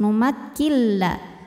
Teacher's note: karena ada nun sukun menghadapi huruf lam maka cara bacanya adalah Nun dileburkan ke lam tidak lagi ada suara n melainkan langsung suara lam masuk numakilla tanpa didengungkan artinya jangan ditahan kalau kalau Nun ketemu lam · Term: Idam Bil gunah, idgham bila gunnah